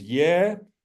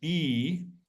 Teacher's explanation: this vowel the Russians pronounce it as ye ukrainians pronounce it as e um we will pronounce it as e but um Russian listeners